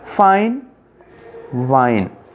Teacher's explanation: The voiced or voiceless distinction also occurs in the following pairs, where the first word begins with a voiceless sound and the second with a voiced sound